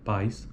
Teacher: a proeminência está na vogal a e não na vogal e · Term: ditongo